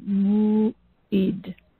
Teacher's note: M as in Mary, U, the glottal stop, and the I, D as in David